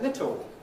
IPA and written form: ˈlɪto (little)